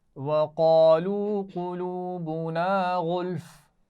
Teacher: وقالوا قلوبنا دونوں میں قاف کو موٹا پڑھنا ہے